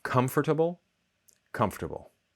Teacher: lots of people delete the schwa, the sound in adorable